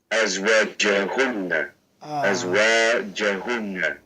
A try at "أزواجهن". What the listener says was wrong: Is it jahunna or juhunna? ضمة on the jim.